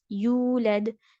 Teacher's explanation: ہاں تو یہاں پر جو ہے یو نہیں کہنا، حمزہ بالکل بھی نہیں، حمزہ کا ساؤنڈ 0 سے بھی 0% آنا ہی نہیں چاہیے